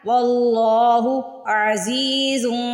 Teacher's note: عزی میں دیکھیے زا کو سٹریچ کرنا ہے، زیر کے ساتھ یا آ رہی ہے